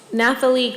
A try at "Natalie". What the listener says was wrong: Natalie, you can just, yeah, the H is silent.